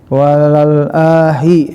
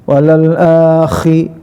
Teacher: Akhi, kha, ya, huruf al-hal ku ada di adnal haki, tenggorokan bagian atas. Kha harus ada ngoroknya.